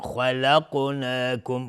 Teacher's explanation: خا از حروف استعلا است و قاف هم از حروف استعلا است. اینجا قاف هم قلقله هم میخواد چون ساکنه